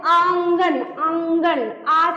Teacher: मुख और नाक दोनों से उच्चारित हो रहा है। · आंगन इसी तरह लिखते हो ना जैसे आंगन तो आ जो बोलते हैं आंगन आंगन आ से आवाज कहां जा रही है नासिका में नाक में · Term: चंद्रबिंदु